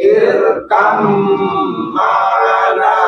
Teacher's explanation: Ba dengan mim itu satu makhraj. Ba ne masuk ke mim, ba hilang ke mim. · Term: idgham